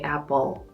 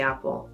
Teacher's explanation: And we are articulating what is often called a dark L.